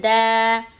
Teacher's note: دال زبان کی نوک سامنے کے 2 دانتوں کی جڑ میں لگانے سے دال ادا ہوتا ہے. الف سے پہلے زبر حرف مدہ تھوڑا کھینچ کر پڑھیں گے.